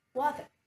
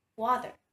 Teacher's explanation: One of the most common difference of this accent among any other variant of languages is the rhoticity, which refers to a clear pronunciation of the letter R at the end of every word